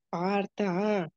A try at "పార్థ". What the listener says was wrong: పార్తలో దీర్ఘం ఉందా లేదు కదా పార్త అంతే కదా